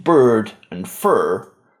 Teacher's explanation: This involves holding the tongue in the tip curled back position while pronouncing the vowel. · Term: r-coloured vowel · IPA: ɝ